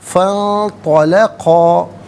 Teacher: نون ساکن کو اخفا کے ساتھ پڑھا جائے گا، ناک میں آواز لے جا کر گنگنانا، اس سے اخفا کہتے ہیں